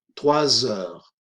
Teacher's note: la S no suena en 3, pero sí sale en la pronunciación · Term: liaison